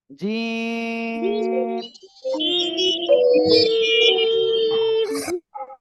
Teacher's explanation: উচ্চারণ করেন জিম তিন আলিফ টান হবে কয় আলিফ তিন আলিফ জিহ্বার মাঝখান তার বরাবর উপরের তালুর সঙ্গে লাগিয়ে শক্ত আওয়াজে উচ্চারণ হবে